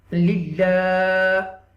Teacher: You will stretch a little bit because this is the ism jalalat, and you will read with tarqiq.